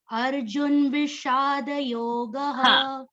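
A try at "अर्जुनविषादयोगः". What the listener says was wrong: See, now Arjun is not a halanta. Halantana is not there. So you can't say Arjun Vishada. Arjun means na should go halant. It is Arjuna. Akara is already there in there. Arjuna Vishada Yogaha.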